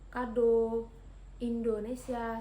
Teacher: vokal O, madiah atas belakang dengan posisi mulut. semi tertutup